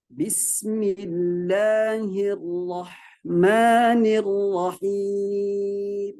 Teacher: mim di ujungnya, ya itu hati-hati teman-teman karena dia punya sifat bainiyah, kemudian punya sifat gunnah, maka sedikit ditahan, jangan lama. Sedikit ditahan, ditunaikan sifat gunnahnya di janur hidung.